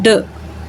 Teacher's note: आपके पास first and last sounds in डॉट में जो फर्स्ट साउंड है ड, ठीक है, जब आप इसको ड साउंड प्रोड्यूस करते हो तो आपकी जो टंग है उसका जो फ्रंट पार्ट है वो हमारे एल्वियुलर रिजिड को टच करता है